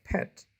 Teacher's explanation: the sound p is voiceless because the air goes through the vocal cords without any vibration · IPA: /pet/